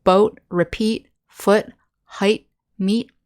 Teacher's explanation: the t sound at the end isn't as hard we don't hear the t · there's still no buzzing of the throat, but we don't make that hard t-t-t-t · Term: soft unvoiced